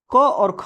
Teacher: क और ख बोलने पे हम कंठ से खुल करके बोलते हैं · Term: कंठ ध्वनियां